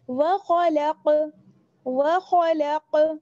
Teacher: آواز جو ہے وہ لوٹ کر آ رہی ہے قاف کی, ایسا نہیں کہ آواز بند ہو رہی ہے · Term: قلقلہ